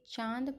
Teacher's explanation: इसका उच्चारण नाक और गले से होता है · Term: अनुनासिक